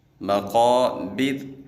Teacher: مقابر ہم نے را کو باریک پڑھنا ہے